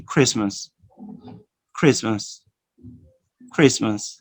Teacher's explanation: No t sound. You omit the t, all right? You omit the t.